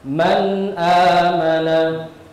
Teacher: Nah, di sini perhatikan ada nun sukun bertemu dengan hamzah, maka cara membacanya jelas tanpa mendengung.